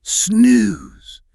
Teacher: The long ooh sound, the soft Z, it literally mimics the acoustic feeling of a lazy, warm sleep